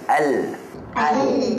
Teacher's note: Hujung dan permukaan lam.